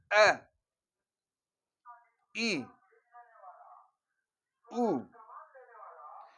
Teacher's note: जब ये हम हमजा अदा करेंगे बिल्कुल सीने से आवाज आएगा